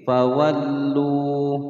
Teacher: Fawallu panjang dua ketukan karena ada wawu sukun di sini sebelumnya dhammah. Ya, atau dhammah berhadapan atau bertemu dengan wawu sukun.